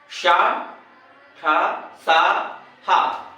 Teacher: ये तालव्य सा, मूर्धन्य सा, दत्ती सा और हा, ये सब महाप्राण हैं।